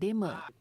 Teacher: sebutan dialek Perak lebih kepada penggunaan vokal E pepet seperti perkataan dema